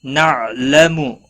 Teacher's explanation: عین ساکن پر قلقلہ نہیں ہونا چاہیے۔